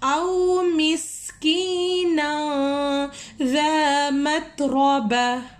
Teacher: تنوین کے بعد اگر ذال آ جائے تو وہاں پہ اخفا ہو رہا ہے، آواز کو ناک میں چھپا کر پڑھنا ہے